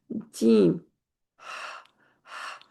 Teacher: جیم درمیان کا حصہ، اور اوپر بھی تالو کا درمیان